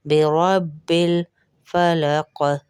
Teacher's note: آپ دیکھیے او نہیں ہے، اعوذ، اعوذ، اعوذ برب رو بازبر رب ہے، بی رب بے ربل نہیں ہوتا، کچھ عورتیں بے ربل پڑھتی ہے، بے ربل بھی نہیں ہے، بے ربل۔ جس لفظ کے اوپر تشدید ہے اس کا مطلب یہ دو با ہے، ایک با نہیں، یہ دو آوازیں آئیں گی۔